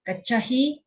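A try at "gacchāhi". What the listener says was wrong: So when you say this gachahi, you remember there's a long IA here. So gachahi, right? Gachahi. So here is gachahi with a long A.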